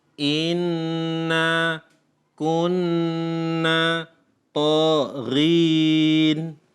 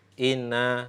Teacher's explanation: ketika ada kasus Nun dan mim yang bertasydid maka membaca ghunnah membaca berdengung itu hukumnya wajib